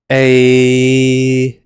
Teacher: So you can try stretching it out one of two ways. A, you can see that at the end it just becomes the e sound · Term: compound vowel